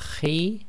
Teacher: slight grinding in the throat there